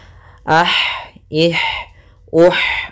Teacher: ha salah satu sifatnya sama seperti ta, yaitu hamas, mengalirnya nafas kita.